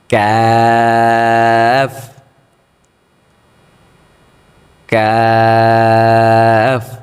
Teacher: ক্যাফ, এটা মুখ থেকে হবে, গলা থেকে না